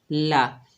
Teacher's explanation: کھینچ کر پڑھیں گے، قاف کو موٹا ادا کریں گے، قا، لام کے اوپر زبر بغیر کھینچے پڑھیں گے